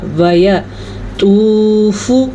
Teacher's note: تو پیش واو ساکن تو، اسے واو مدہ کہتے ہیں، اس کو کھینچ کے پڑھا جاتا ہے، اس کو لمبا کریں گے۔